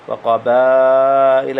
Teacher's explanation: وقبائل یہاں مد واجب ہے، اس کو 4 حرکت لمبا کریں۔